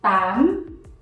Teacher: lower your voice and raise it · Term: upton